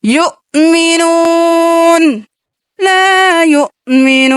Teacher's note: لا یؤمنون، یو جھٹکا دینا ہے، حمزہ ہے